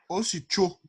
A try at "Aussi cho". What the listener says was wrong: Il n'y a pas le coup de glotte.